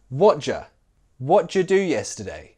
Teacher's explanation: Did you can be smushed together to sound like j. J with a schwa sound.